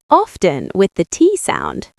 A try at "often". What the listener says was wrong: Many people do, but the T is actually silent. It should be often. Yes, often, like often, no T sound. I know, English spelling is confusing, but traditionally, the T is silent, often.